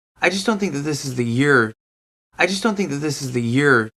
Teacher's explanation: this is his own opinion so he's stressing I